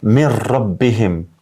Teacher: Mir rabbihim, domethënë nuni po zhduket komplet po hyn te raja. Jo min rabbihim, po min nuk po ashtu, jo min rabbihim, po mir rabbihim. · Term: idgham të kompletuar